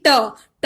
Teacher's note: आप बोलिए टा देखेंगे तो हमारे जो जीभ है ये हमारे उलट के हमारे तालू को स्पर्श करती है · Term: मूर्धन्य